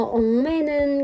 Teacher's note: 엉매는 같은 기역의 두 번째 단어 엉매는 같은 경우에는 우선 자음군단 순화를 통해서 리을을 탈락시키고 억매는 이라고 남겨줍니다. 그리고 뒤에 있는 미음의 영향을 받아서 기역 받침이 이응으로 교체되는 비음화가 일어납니다.